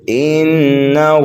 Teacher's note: انہ نون مشدد ہے، غنہ کر کے پڑھیں گے، ہا کے اوپر الٹا پیش ہے، ایک الف کے برابر کھینچ کر کے پڑھیں گے۔